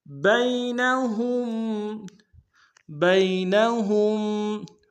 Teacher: بین میں با کو یا کے سامنے لائیں گے، یا لین بغیر کھینچے پڑھیں گے